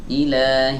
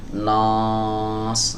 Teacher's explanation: berhubung huruf nunnya adalah huruf tipis, maka alifnya ini harus dibaca tipis juga.